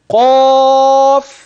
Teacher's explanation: حرف مد جاء بعده ساكن وهذا الساكن غير مشدد اذا سامد حرف المد وهو الالف ست حركات ويسمى مد لازم